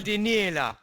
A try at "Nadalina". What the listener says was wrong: That's wrong because the L is before the N, you stupid. I'm telling you you're wrong, and if somebody reads that like how you said it, then your language is just bad.